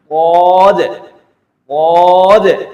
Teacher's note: اس side میں بھی ادا ہو سکتی ہے، اس سائڈ میں بھی ادا ہو سکتی ہے، لیکن آپ کے لیے جو آسان ہو تو آپ نے اس ترتیب سے پڑھنا ہے، زبان کے دائیں سائڈ کو اوپر کے داڑھ کی دانتوں کی جڑوں سے لگانا ہے، پھر پڑھنا ہے غاد غاد، اس کو بھی لمبا کر کے پڑھنا ہے، غاد، داد نہیں پڑھنا ہے، موٹا کر کے پڑھنا ہے، منہ بھر کے پڑھنا ہے۔